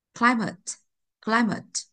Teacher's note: Mà trọng âm rơi một ạ